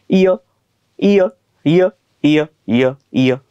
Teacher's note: यला जे आपण अर्ध स्वर म्हणतो ते त्यासाठीच तर म्हणतो की य चा उच्चार इ आणि अ यांचा जलद उच्चार केल्यासारखा होतो